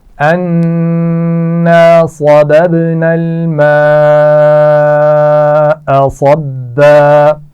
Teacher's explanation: صببنا صاد موٹا ہے اور با پر قلقلہ ہو رہا ہے. صببنا، اور یہ آگے اگلے لفظ سے ملے گا بھی. · صببنا الماء بڑی مد ہے، اور صبا صاد موٹا پڑا جائے گا، با پر شد ہے تو اس کو سختی سے پڑھیں گے